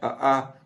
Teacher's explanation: अ आ कंठ से होता है